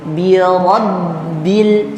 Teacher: Rabbil, bunyinya itu tertahan di bibir. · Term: tasydid di huruf ba